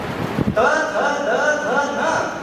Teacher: नहीं, द ध द ध न, इनका सभी का उच्चारण एक विशिष्ट एक समान प्रकार से होता है। ये सब दंत्य है, दांत को जिह्वा का स्पर्श किए बिना इनका उच्चारण नहीं होता, इसलिए उनको इकट्ठा रखा गया है।